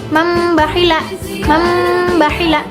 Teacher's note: Jadi ada nun mati bertemu dengan ba itu masuk ke dalam huruf bnya gitu. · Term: iqlab